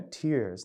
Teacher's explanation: E teve um dia que ele soltou uma palavra, a palavra tears, que no inglês americano é tears, né, você puxa mais o R